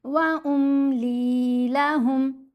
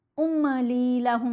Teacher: میم کو نہیں ہلانا، بالکل ساکن پڑے، سموتھ ٹھہری ہوئی آواز